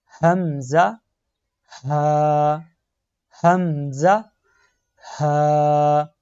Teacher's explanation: اقصی حلق یعنی گلے کے سب سے نچلے والے حصہ سے نکالتے ہیں · جو یہ سب سے پہلے دو حروف آپ کو نظر آ رہے ہیں، حمزہ، ہا، ان کو ہم گلے کے سب سے نیچے والے حصہ سے ادا کریں گے۔